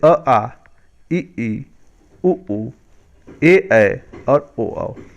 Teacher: अ आ कंठ से हो गया, ई तालु से हो गया, उ ओठ से हो गया।